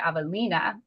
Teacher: when you say Avalina, the I is going to get the emphasis